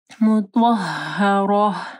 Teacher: یہ جو گول تا ہے یہ وقف کی صورت میں ہا ہو جائے گی